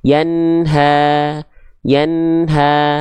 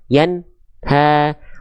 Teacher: Nun sifatnya Bukan syiddah tapi tawasut